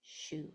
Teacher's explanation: My mouth is already in that pucker shape. It's already shh. So it's not going to back up and make that whole U sound. It's not going to say sh U.